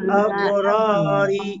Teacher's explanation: র এক আলিফ টান হবে, আর র অক্ষর মোটা হবে, আর এখানে রি, র নিচে জের চিকন করে পড়বো।